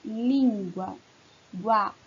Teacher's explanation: No finalzinho, nós temos um ditongo. Nós temos uma semivogal e uma vogal.